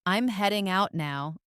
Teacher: the voice usually goes down on the word out.